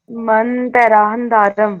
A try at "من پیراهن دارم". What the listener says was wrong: پیراہن نہیں، پھر اردو پہ آ گئے آپ. من پیراہن دارم.